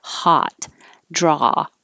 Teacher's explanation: the ah, the jaw is very low and the lips are straight.